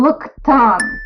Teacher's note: That went into a T, looked, and that's bridging with my KT phenomena quirk. When it ends with a K, it goes into a hard T instead of a D.